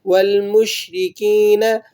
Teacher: شین کی آواز پھیل جاتی ہے، آپ نے اسے تھوڑا سا پھیلا کر پڑھنا ہے